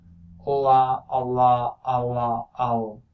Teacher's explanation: And this is also not the same as the velar L. So this is alveolar but velarized, so that's a secondary constriction. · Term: alveolar velarized L